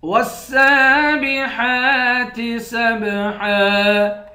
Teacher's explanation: سین کو با کے ساتھ ملا کر با پر قلقلہ کریں گے